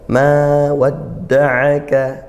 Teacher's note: Kemudian ayat yang ketiga, ma wadda'aka, ma fathah diikuti alif dibaca panjang satu alif atau dua harokat yaitu mad tabi'i. Wadda'aka tasydidnya dal dikuatkan, aka pakai ain ya, disempurnakan makhrajnya ain.